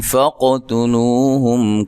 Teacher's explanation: قاف کو موٹا ادا کرنا ہے، تا کو باریک پڑھنا ہے، لو و مدہ ہے، ہم میم ساکن کا یہاں ملانے کی صورت میں اظہار ہوگا، غنہ نہیں کریں گے۔ وقف کی صورت میں میم ساکنہ کو ہلانا نہیں ہے، ٹھیک ہے، میم ساکن کو ہلانا نہیں ہے، نہ وقف کی صورت میں اور نہ ہی ملانے کی صورت میں۔